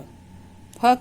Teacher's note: फ का उच्चारण स्थान ओष्ठ और उच्चारण नाम ओष्ठ्य